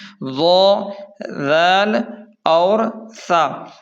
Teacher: یعنی دانتوں کے کنارے سے 3 حروف ادا ہوتے ہیں